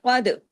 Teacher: قاف کو ہیوی، دال باریک، لیکن دال پہ کلکلا